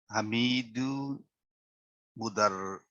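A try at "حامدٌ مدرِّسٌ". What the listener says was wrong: Hamidun mudarrisun. So it's under the shadda, so this means it's a kasra. Okay, so mudarrisun. Hamidun mudarrisun.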